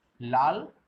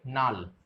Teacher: অর্থাৎ প্রথমে লটা পরিবর্তিত হয়ে দন্তের ন হয়েছে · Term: বিষমী ভবন